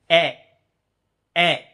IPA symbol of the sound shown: æ